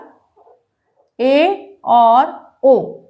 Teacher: अर्धसंवृत में मुंह थोड़ा ज्यादा खुला होगा